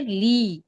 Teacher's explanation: لام زیر لے نہیں پڑھیں گے، ہم کہیں گے لام زیر لی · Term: معروف طریقہ